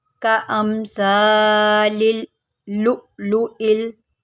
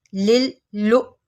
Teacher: लाम को पहले लाम के साथ मिलाएंगे, फिर लाम को हमज़ा के साथ मिलाएंगे।